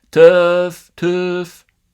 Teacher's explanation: he's not saying it as tough with a wedge in the middle uh he's saying it with a schwa